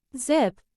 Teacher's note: similar to S, but with the vocal cords vibrating